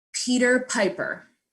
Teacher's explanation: how hard should the pee be you should be able to feel air so put your hand in front of you and say with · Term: hard p